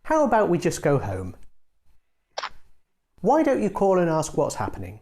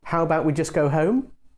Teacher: The suggestion with a falling tone doesn't sound so much like a question it sounds more confident and direct